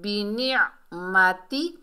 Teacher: عین کو حلق کے درمیان سے ادا کریں گے